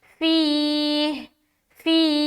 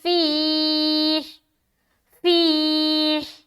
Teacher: ہا کے اوپر سٹاپ کریں تو ہا بھی واضح ہونا چاہیے